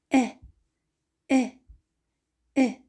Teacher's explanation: «Э» – это мягкий классный звук, произносится кратко. При произношении язык продвинут вперед и чуть прижимается к нижним передним зубам.